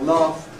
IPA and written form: læfd (laughed)